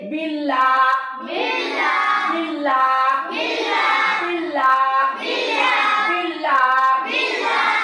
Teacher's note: अल्लाह के नाम से पहले जेर है, इसलिए अल्लाह का नाम बारीक होगा।